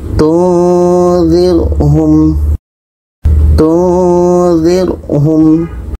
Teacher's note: Nun mati bertemu za, dengung.